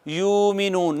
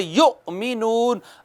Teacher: جیسے یؤمنون، یؤمنون، اس کو یوں نہیں پڑھ سکتے یومنون، نہیں، یا کے بعد حمزہ ہے، جٹکا مارنا ہے، وہاں پہ جٹکا دینا ہے، کہنا ہے یؤمنون، الف پر کبھی جٹکا نہیں دینا، حمزہ پر ہمیشہ جٹکا دینا ہے۔